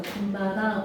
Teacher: 뒷말이 니은미음으로 시작해서 니은 소리가 하나가 더 나는 거야